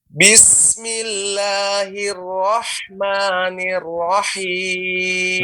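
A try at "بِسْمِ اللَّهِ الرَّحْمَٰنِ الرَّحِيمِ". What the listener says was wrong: Nah, mi-nya harus kebawakan mi, maka sempurna tadi kasrohnya. Bismillahirrahmanirrahim. Ni-nya sempurnakan kebawahkan rahangnya sehingga ni rahmani nirrahim. Bismillah.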